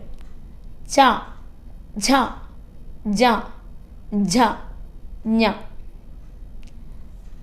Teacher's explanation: ചവർഗം താലവ്യം എന്നാണ് പറയുക. നമ്മുടെ അണ്ണാക്ക് ഉപയോഗിച്ച് ഉച്ചരിക്കുന്നത് എന്ന് പറയും.